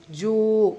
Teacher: வாவு மத்தா 2 ஹரக்கத்தளவு நீட்டம் கொடுக்கணும்.